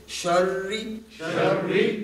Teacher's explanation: را کو کنٹرول کر کے ادا کرنا ہے کہ مشدد بھی رہے اور اس میں تھرتھراہٹ، تکرار کی جو ہے اس کی تھرتھراہٹ نہ آئے۔ اس کو یوں پڑھیں گے شری، اگر یوں ہو گیا شری تو وہ را جو ہے وہ کانپ گئی۔